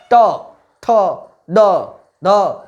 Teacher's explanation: ट ठ ड ढ को टवर्ग कहते हैं जिनका उच्चारण मूर्धा से होता है। देखिए दम लगाइए, अंदर से आता है।